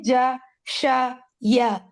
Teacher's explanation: middle part of the tongue, it touches what lies opposite from the roof of the mouth. Yani, middle part of the palate.